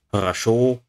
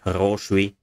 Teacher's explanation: хорошо, stress syllable, the last one, and хороший, stress syllable, second syllable, quite different.